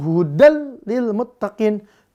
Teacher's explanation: meleburkan bunyi nun sukun atau tanwin An In Un ya ke dalam huruf lam atau ro dengan tanpa dengung · Hudan ada patatain ada tanwin bertemu huruf lam maka dia langsung hudannya dimasukkan ke lam maka bunyinya jadi hudal tanpa dengung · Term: idgham Bil gunah, Bila gunah